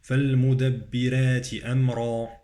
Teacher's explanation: الراء في كلمة المدبرات مرققة يسبقها كسر. فالمدبرات أمرا، أمرا مفخمة، الراء مفخمة.